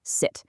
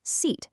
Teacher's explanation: Notice that really quick sharp vowel in sit. Now compare that to the longer, more stretched out vowel in seat. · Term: timing